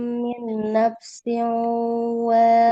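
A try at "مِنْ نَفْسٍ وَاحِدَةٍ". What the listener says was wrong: naf. Kalau huruf H ini dia harus lebih mengalir ya. Min nafsin wahidah. Min nafsin wahidah.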